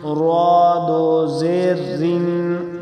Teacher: اب را پر زیر ہیں، دو زیر ہیں تو اس کو باریک کریں گے